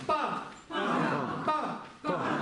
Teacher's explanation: Потому что у нас смыкаются губы, поднимается внутри давление, губы открываются, происходит звук па. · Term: губная